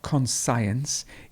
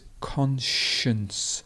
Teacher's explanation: the stress would be at the beginning, and then we have the sh sound